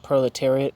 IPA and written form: ˌproʊlɪˈtɛəriət (proletariat)